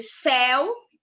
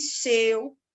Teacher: é o caso de céu que a gente tem aberto e seu que a gente tem um ditongo fechado